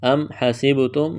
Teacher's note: میم ساکن کے بعد ہا ہے، اظہار کریں گے